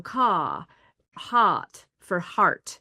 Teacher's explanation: But if you look at Southern British speech, especially upper class Southern British speech, it's non-rhotic, which means they drop R's in certain words. And so car, hot for heart, those R's get dropped.